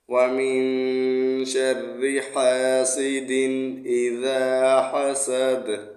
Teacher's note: وقف میں دال کو ساکن پڑھیں گے تو قلقلہ کریں گے۔